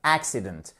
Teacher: vous avez accentuation sur la première syllabe